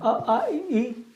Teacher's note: सभी स्वर हमारे अल्प प्राण होते हैं। अ आ इ इसको बोलने में आपका मुख से कम हवा निकलता है, इसलिए इसको अल्प प्राण कहते हैं।